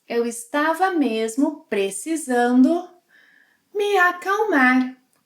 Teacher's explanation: We drop the es sequence of the verb estar conjugated in any verb tenses.